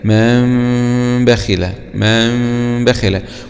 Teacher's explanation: هنا نلاحظ جاء حرف الباء بعد النون الساكن، فهنا نغير هذه النون وتنقلب إلى ميم مخفاة بغنة، هكذا: من بخل، من بخل. ونلاحظ أن إخفاء الميم يعني لا يكون هناك فرجة كبير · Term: الإقلاب